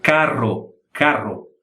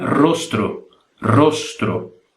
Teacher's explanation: E se pronuncia carro. A língua bate várias vezes no céu da boca.